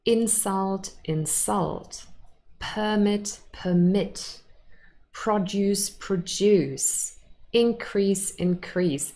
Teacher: we have verbs, those are stressed on the second syllable, and then nouns, and they are stressed on the first syllable